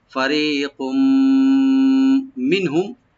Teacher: আর কাফের উপরে যে তানবিন আছে, তানবিনের উপরে যেহেতু মিম আছে এখানে ইদগাম উইথ গুন্না হবে